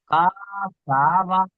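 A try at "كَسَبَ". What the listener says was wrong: টান হবে না। জি টান হবে না, জাবার লাগানোর পরে টান হবে না। আপনি বলছেন যে কা সাবা, কা টান হবে না, আপনাকে বলা হচ্ছে।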